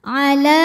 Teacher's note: ala la hukumnya Mad Thobi'i muqaddar sebab lam berharakat fathah panjang maka cara baca huruf lam dipanjangkan dua harakat